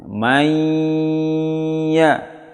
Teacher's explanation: Nun sukun bertemu ya, harus dengung yang lama. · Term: idgham bi ghunnah